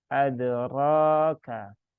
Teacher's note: dibaca dengan tebal ya, dengan cara menaikkan pangkal lidah, bukan dengan memonyongkan dua bibir ya, bukan dengan ro, tapi mulutnya tetap dibuka sesuai dengan kadar huruf ro ya, adraka, dan dipanjangkan 2 harokat.